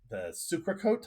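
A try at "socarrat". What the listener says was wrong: The socarat. You got to roll that R. So that's a socarat.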